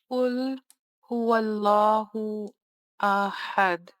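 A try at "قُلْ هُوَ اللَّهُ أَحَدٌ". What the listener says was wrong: And right here, the qalqala is missing.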